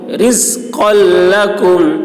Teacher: قاف کی آواز موٹی ہوگی